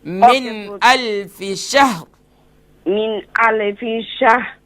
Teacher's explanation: ہاں من میں جو نون ہے نا، نون ساکن کے بعد حمزہ ہے، تو یہاں پر اظہار ہوگا، غنہ نہیں ہوگا، اخفا نہیں کریں گے